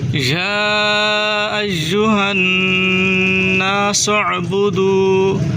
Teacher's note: نون مشدد ہے، غنہ کریں اور عین کو حلق سے نکالیں